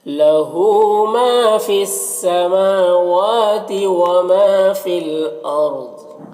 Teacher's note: اور یہاں پر فی کے یا میں کوئی حرکت نہیں، اس کو نہیں پڑھنا ہے۔ یہاں پر رائے ساکنہ سے پہلے حمزہ کے اوپر زبر ہے تو را کو پر پڑھیں گے۔ ضاد حروف مستعلیہ میں سے پر پڑھیں گے، وقف کی صورت میں یہ زیر سکون سے بدل جائے گا، تو اس طرح سے پڑھیں گے۔